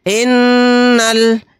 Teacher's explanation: یہ الف نہیں پڑھا جائے گا، نون کو لام کے ساتھ ملائیں گے۔